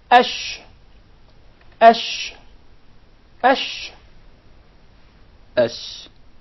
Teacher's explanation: So there is a very noticeable elevation in the middle part of the tongue. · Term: sheen